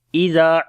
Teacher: ذال کو نرم پڑھیں گے، لمبا بھی کریں گے، الف مدہ ہے۔